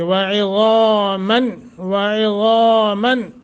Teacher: نون تنوین کے بعد حمزہ اظہار کریں گے، اخفا نہیں ہوگا۔